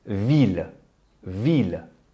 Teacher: Unlike other words ending in ILLE in French, which sound like I, such as fille, feuille, bille, the LLE are vocalized. When English speakers make this mistake, it often comes out as vie, which means life.